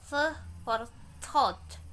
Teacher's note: Interdentals is produced by putting the tip of the tongue between the teeth.